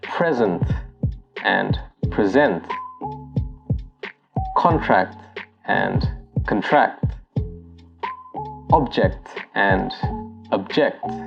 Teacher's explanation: Well, some of them do follow a particular pattern, and it usually applies to those words with two syllables that can either be a noun or a verb. The noun usually has the stress on the first syllable, while the verb has the stress on the second syllable.